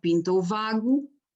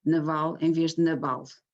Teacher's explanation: temos um B que o próprio falante do norte, falante desses dialetos setentrionais, vai substituir pelo V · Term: hipercorreção